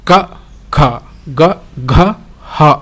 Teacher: ಹುಟ್ಟುವ ಸ್ಥಾನಗಳನ್ನು ಸಹ ನಾವು ನೋಡಬಹುದು ಉಚ್ಚಾರಣ ಸ್ಥಾನಗಳನ್ನ ಮೊದಲನೆದಾಗಿ ಕಂಟ್ಯ ಅನ್ನುವಂತದನ್ನ ನೋಡಬಹುದು ಕಂಠ್ಯ ಅಂದ್ರೆ ಗಂಟಲು ಈ ಗಂಟಲಿನಲ್ಲಿ ಇರುವಂತಹ ಅಕ್ಷರಗಳಿಂದ ಹುಟ್ಟುವಂತಹದ್ದು ಅವು ಕ ಖ ಗ ಘ ಹ ಅಕ್ಷರಗಳು ಏನಾಗ್ತವೆ ಕಂಠ್ಯಸ್ಥಾನದಲ್ಲಿ ಹುಡುತ್ತವೆ ಅನ್ನುವಂತದ್ದು